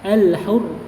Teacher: Tapi nanti kita cek yang pasti intinya ketika di sini tidak ada tasydid ya, tidak ada tasydid maka itu alif lamnya dibacanya jelas